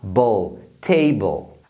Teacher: sempre vai ser o som da consoante mais o som do L que aquele som do Dark toma cuidado para você não fazer um som de ditongo porque